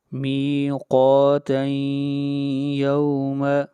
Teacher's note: قاف حروف مستعلیہ میں سے ہے اس لیے اس کو موٹا پڑھا جائے گا